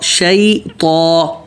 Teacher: شی اور طا موٹا اور سیدھا ہونٹ گول نہیں کرنا